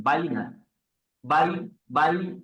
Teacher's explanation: ইয়াটা মুখের খালি জায়গা থেকে উচ্চারণ হয়েছে